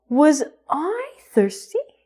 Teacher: make sure that your intonation goes up at the end of the sentence